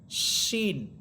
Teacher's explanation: জিহ্বার মধ্যখান তার বরাবর উপরের তালুর সাথে লাগবে।